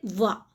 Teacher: व बोलेंगे तो इसमें होठों की भी सहायता लेनी पड़ेगी और दंत से भी हमारी जो ध्वनि है वो स्पर्श होगी · वा का उच्चारण स्थान होता है हमारा दंत और ओष्ठ दोनों से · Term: दंतोष्ठी, दंतोष्ठ